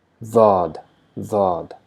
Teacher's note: Because the tongue is touching the side of the teeth, it produces very slight buzzing Z sound. Daad, very slight.